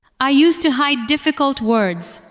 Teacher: Stress hide and difficult words.